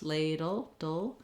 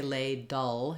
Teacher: the D to the L and the letter e is silent if there's any sound between D and L it's a small light little unstressed schwa